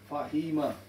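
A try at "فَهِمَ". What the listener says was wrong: You've got to be faster. Fahima. Yeah, the Fatha, Kasra, Dhamma. These are short vowels which cannot be stretched. Which cannot be stretched. So the way to pronounce it is quick. Fahima.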